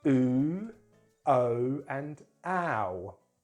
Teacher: So we add a w sound when we're working with rounded vowels. We call them rounded vowels, and just three of them in British English, because our lips have to round for these sounds